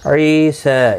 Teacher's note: یا مدہ ہے، 1 الف کی مقدار کے برابر کھینچ کر پڑھیں گے